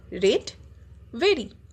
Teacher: ওকে, জিভ রোল করা যাবে না আর বলার সময়। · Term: r sound